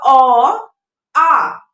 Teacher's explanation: अ और आ का जो उच्चारण स्थान है वो कंठ है। जैसे आप जो वॉइस निकालेंगे, जो आप बोलेंगे ना, तो आप देखिएगा अ, आ, तो ये कंठ से निकलती है।